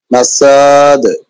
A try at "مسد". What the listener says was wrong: টান নাই তো সিনের উপরে জবর না এক জবর টান হবে না মাসাদে